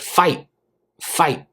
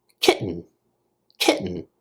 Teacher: this is a common thing that we do in English we cut off that T sound